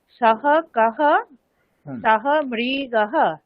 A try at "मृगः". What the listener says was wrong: न, मृगः। दीर्घि नास्ति, केवल मृगः। हाँ मृगः।